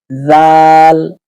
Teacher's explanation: দুই দাতের মাঝখানে জিব্বা আসবে